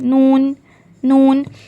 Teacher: जब ज़बान की नोक, टिप ऑफ द टंग, और उसके मुकाबिल, मतलब उसके ऑपोजिट, जो ऊपर के 2 दांत है, फ्रंट, सामने के जो ऊपर के 2 दांत है, उसके मसूड़ों से लगने से लेटर नून अदा होता है, नून नून, और इसमें भी गुन्ना होता है।